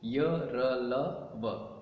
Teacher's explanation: इन व्यंजनों का उच्चारण करते समय जीवा मुख के किसी भी भाग को पूरी तरह नहीं छूती तथा इनके उच्चारण में श्वास का अवरोध बहुत कम होता है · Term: अंतस्थ व्यंजन